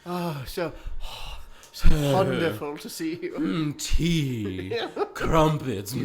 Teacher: She does the super fake breathy British.